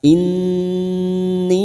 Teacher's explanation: Nun yang bertasdid gunnah musaddada mendengung selama 3 harokat. Inni, mat bertemu dengan hamzah di lain kalimat, mat jaiz munfasil 5 harokat kita samakan.